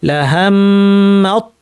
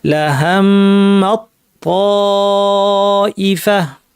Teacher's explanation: দুইটা তকে তাজদীদযুক্ত একটি ত বানিয়ে পড়ব লাহাম। তাইলে মিম গিয়ে সরাসরি তকে ধরবে, মাঝখানে তা আসবেই না। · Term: ইদগাম